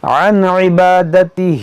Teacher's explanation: نون ساکن کے بعد عین ہے تو یہاں پر اظہار کریں گے, یعنی یہاں پر غنہ نہیں ہوگا